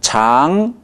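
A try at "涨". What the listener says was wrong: NG 발음이 나줘야 됩니다. NG가 안 났어요. 예, 지금 좋은데 장 이렇게 해서 삼성으로 오해할 가능성이 있어요. 치 하고 앙을 빨리 올라가세요.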